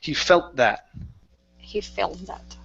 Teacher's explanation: combine the T and the th so he felt that so the t is actually just going to disappear